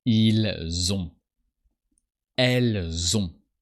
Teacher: And you hear that we pronounce the S of il and elle when the following word starts with a vowel. And you hear that this S sounds like a Z.